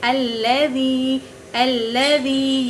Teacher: یہاں پر یا ساکن اس سے پہلے زیر ہیں تو یہ یائے مدہ ہے۔ یائے مدہ کو ایک الف کے برابر کھینچ کر پڑھتے ہیں، الذی، الذی، یہ ایک الف کے برابر ہیں۔